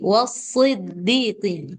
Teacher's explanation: Dia lebih ke sin, lebih mirip ke sin, tapi ini yang dia karena punya sifat isti'ala dia jadi tebal.